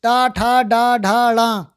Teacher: तो ये मूर्धन्य व्यंजन है, अर्थात जीभ ऊपर मुड़ती है।